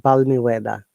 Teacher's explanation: this balmy the L is always silent L is not pronounced you'll be surprised to know that it is a longer sound and L is silent